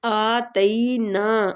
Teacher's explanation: کھینچیں گے، آتینا، تئی کے آگے یا لین ہو رہا ہے، نون الف مد کے ساتھ ہے تو کھینچیں گے